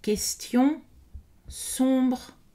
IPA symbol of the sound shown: õ